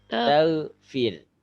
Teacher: Jangan sampai mantul goinnya. Goinnya sukun aja.